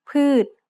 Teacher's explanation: ชอช้าง makes the same T-stop sound as a final consonant